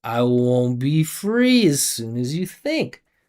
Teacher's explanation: Notice you barely hear my consonant sounds. You barely hear consonant sounds. They're soft and I'm just sliding through a vibration and vowels.